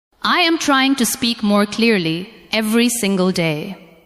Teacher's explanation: give a little more stress to the words trying, speak, clearly, and day. Let the other words stay softer and lighter.